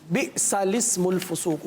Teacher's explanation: لام سے پہلے والا الف اور لام کے بعد والا الف نہ پڑھیں بلکہ لام کو زیر دے کر پڑھیں، یعنی لسم الفسوق.